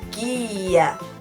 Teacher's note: Eu falo somente o som de G, eu não falo o som de U. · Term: dígrafo